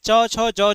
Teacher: यानी च, छ, ज ये सभी तालु से निकलता है। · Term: च वर्ग